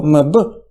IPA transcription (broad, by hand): mb